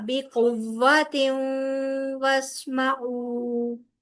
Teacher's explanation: آتیناکم بقوۃ، تیوں تنوین کے بعد واو آ رہا ہے جو یرملون میں سے ہے واو، یعنی کہ ادغام بالغنہ ہوگا